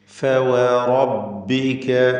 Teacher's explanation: ഫ താഴെ ചുണ്ടിൻ്റെ മധ്യവും മേലെ മുൻപല്ലുമാണ്. വാവ് രണ്ട് ചുണ്ടുകൾ വൃത്താകൃതിയിലാക്കിക്കൊണ്ട് ഉച്ചരിക്കുന്നു. ശേഷം റോ തഫ്ഖീമോടുകൂടി തടിപ്പിക്കേണ്ട അക്ഷരവും. · ഫ, വാവ് ഇവ രണ്ടും ചുണ്ടിൽ നിന്നാണ്. ഫ താഴെ ചുണ്ടിൻ്റെ മധ്യവും മേലെ മുൻപല്ലുമാണ്. വാവ് രണ്ട് ചുണ്ടുകൾ വൃത്താകൃതിയിലാക്കിക്കൊണ്ട് ഉച്ചരിക്കുന്നു.